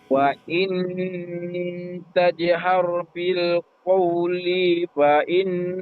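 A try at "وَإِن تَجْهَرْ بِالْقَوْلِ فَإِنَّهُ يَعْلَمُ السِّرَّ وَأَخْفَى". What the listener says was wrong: Bil qawli, linya pendek.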